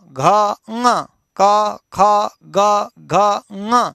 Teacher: कंठ से स्पर्श होकर के ये वर्ण निकलते हैं, इसीलिए इनका उच्चारण स्थान कंठ कहा गया